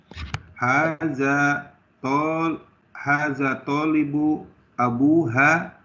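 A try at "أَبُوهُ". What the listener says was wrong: Kalau ha ada alifnya ya Pak ya. Abuha itu ada alifnya. Ini abuhu. Tidak ada alifnya di ha-nya.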